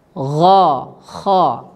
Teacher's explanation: dari ujung tenggorokan, yaitu tempat keluarnya huruf ghain dan kha